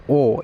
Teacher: ওটা উচ্চারণ করার সময় আমাদের জীবটা গুটিয়ে যায় এবং আমাদের ঠোট যে রয়েছে কুচকে যায়। যার জন্য এটাকে বলছি আমরা কুঞ্চিত স্বরধ্বনি।